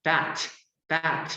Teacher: 모음 다음에 있는 요 알파벳이 성대가 울리지 않는 지금 T, 무성음이죠